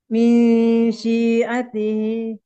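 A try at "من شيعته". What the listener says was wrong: Jadi jangan sin tapi shin yang pertama.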